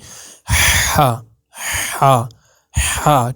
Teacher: ہا جو ہے آپ کے حلق کے اندر سے ادا ہوگا، ادنا حلق اس کو بولتے ہیں